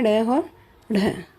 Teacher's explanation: जीभ की नोक को उलटकर कठोर तालु को झटके के साथ स्पर्श करके किया जाता है इसका उच्चारण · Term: उच्छिप्त या ताड़नजात व्यंजन